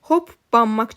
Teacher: Hoppanmaq sözü hoppanmaq kimi tələffüz olunur. Yəni P B-yə keçir.